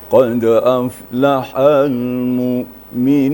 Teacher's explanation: di ujung itu kita naikkan sedikit, ini berbentuk himbauan gitu.